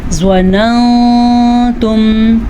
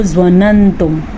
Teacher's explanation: ہم اس نون کو تھوڑا سا چھپا کے پڑھیں گے اور غنہ بھی کریں گے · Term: اخفاء